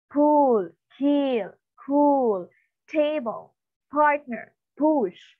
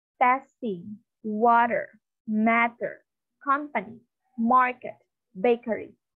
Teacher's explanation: it's not aspirated. You cannot feel an air. You cannot feel the explosive air is released, right?